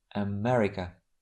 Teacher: The first sound and the last are very weak. America. And these two sounds are called schwa.